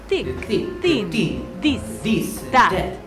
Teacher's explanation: The TH sound and V becomes very dentalized in the Italian accent, just because of where the tongue is in the oral posture.